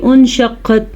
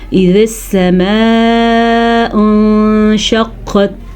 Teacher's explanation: نون کو تھوڑا غننے کی کیفیت ہوگی اور کچھ چھپائیں گے تو یہ اخفا بن جائے گا